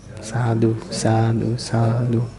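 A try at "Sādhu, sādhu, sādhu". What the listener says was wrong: That was a bit quick, the sadhu, sadhu. It should be very long and impressive.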